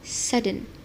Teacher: The speaker simply lowers the soft palate. This redirects the blocked air out through the nasal cavity.